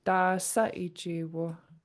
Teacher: Your voice goes up on sa. That's where the question mark is in the sentence, in a Lingit sentence.